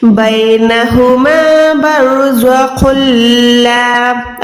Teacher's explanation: بینہما برزخ اللام، اب یہاں پر خن ہے لیکن میں خن نہیں پڑھ رہی، میں خو کو لام کے ساتھ ملا رہی ہوں اور گنہ نہیں کر رہی